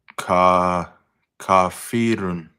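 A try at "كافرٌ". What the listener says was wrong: Not long on the fat. Just make it short. A short kasra. Not e. There's no ya there.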